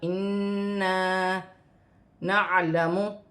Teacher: نون مشدد میں غنہ ہوگا اور ایک الف کی مقدار کھینچ کر پڑھا جائے گا